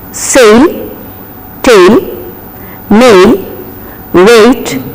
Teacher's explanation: there is no long A sound in English, it is only diphthong sound